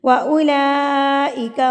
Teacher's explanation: اگر اس مد کے بعد یہ والی حمزہ آ جائے تو یہ مد متصل یعنی کہ بڑی مد کہلاتی ہے. اس کو آپ نے 4 حرکات کے برابر کھینچ کے یعنی کہ لمبا کر کے پڑھنا ہوتا ہے